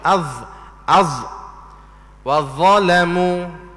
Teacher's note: Sebut huruf za kena keluar hujung lidah juga.